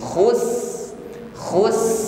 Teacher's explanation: suara huruf Sin khus khus ini kita alirkan terlebih dahulu baru ditutup dengan huruf ro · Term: rakhawah